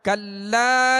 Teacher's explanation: یہاں لام کے ساتھ الف ہے تو ایک الف کی مقدار کھینچ کر پڑھیں گے. الف مدہ ہے، الف سے پہلے زبر آ گیا لام کے اوپر، تو حروف مدہ کی جو ہم نے کل سبق کی مشق کی تھی یہ اسی میں سے. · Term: حرف مد